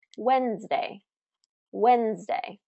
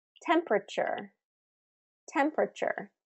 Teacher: So both of these words are first syllable stress.